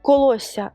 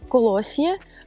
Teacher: називається подовженням приголосних також виникло завдяки занепаду редукованих єр та єрчиків приголосні які опинилися поруч зі звуком й подовжились